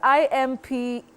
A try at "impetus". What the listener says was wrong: Now, when you say impetus, impetus, you are making a mistake. That E takes the long sound E.